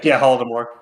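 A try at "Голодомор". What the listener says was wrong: Holodomor. No, it's not H, it's G sound. Gladomor. That's how you say it. Well, that's how at least we say it.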